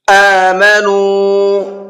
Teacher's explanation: یہاں پر حمزہ کو بھی کھینچنا ہے اور نون کو بھی کھینچنا ہے۔ حمزہ کو اس لیے کھینچنا ہے اس لیے کہ حمزہ کے اوپر کھڑا زبر ہے ٹھیک ہے، اور نون کو اس لیے کھینچنا ہے اس لیے کہ یہاں پر واو مدہ کا قاعدہ ہے، واو ساکن ہے اور اس سے پہلے پیش ہے نو۔